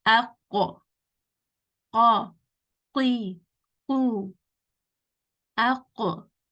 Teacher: you will feel that the back of the tongue or the root of the tongue is touching the soft part. So you will feel a little bit of spongy fleshiness. · Qaf is going to be the tongue touching the soft part. Kaf is going to be touching the hard part.